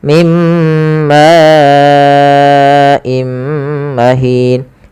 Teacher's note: Karena datang setelahnya hamzah, maka ini kita panjangkan sepanjang 4 harokat. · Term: mad wajib muttasil